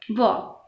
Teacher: दांतों और ओष्ठ की सहायता से बोले जाने वाले दंतोष्ठ्य व